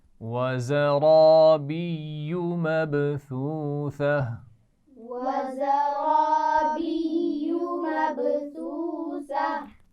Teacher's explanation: اب اس میں زا کی آواز میں سیٹی ہونی چاہیے, را کو موٹا ہونا چاہیے